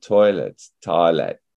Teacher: o i as in toilet becomes an awe